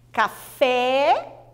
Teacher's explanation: a sílaba mais forte é fé